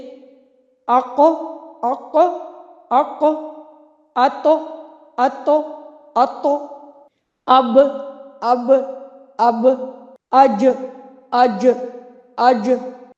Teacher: یعنی آواز لوٹ کر واپس آتی ہے، ایکو ہوتا ہے ساؤنڈ میں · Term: قلقلہ